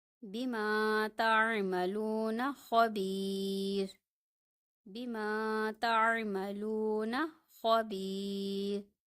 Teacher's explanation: یہاں پہ دیکھیں، را موقوف ہے، یا ساکن ہے، پھر با کے نیچے زیر ہے، تو یہاں پہ یہ باریک پڑھا جا رہا ہے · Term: را باریک